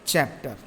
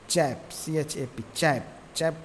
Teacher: चैप्टर में is stressed on the first syllable.